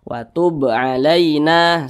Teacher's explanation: Qalqalah sugro, pantulan itu kecil saja.